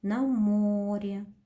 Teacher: На море. Ударение падает на букву О.